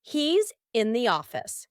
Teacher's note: Do you see how when we link here, it helps you to speak a little more quickly? And when you link it together with a Z, it sounds so natural